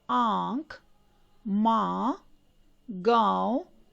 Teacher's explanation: नाक से बहुत कम सांस निकलती है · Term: अनुनासिक